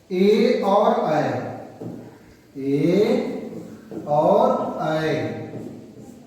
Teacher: ए और ऐ का उच्चारण स्थान है कंठ तालव्य, अर्थात कंठ और तालु